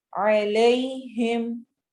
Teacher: फला खौफुन, फला अलिफ मद्दा, खौ खौफुन, वाव साकिन से पहले फतह आ गई तो यहाँ पे वाव लीन हो रही है। अलैहिम, या साकिन और उससे पहले फतह आ गई तो यहाँ पर या लीन हो रही है